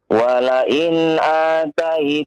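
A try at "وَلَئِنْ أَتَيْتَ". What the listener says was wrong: Pendek, a-nya pendek.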